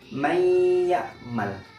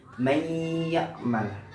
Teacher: Maka nunnya melebur ke huruf ya-nya dan huruf ya-nya didengungkan. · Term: idgham bi gunnah